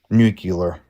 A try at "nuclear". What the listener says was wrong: No, it's nuclear. No, you're putting an extra U in there. It's nuclear. No, it's not nuclear. That's the word that you're saying. It's nuclear.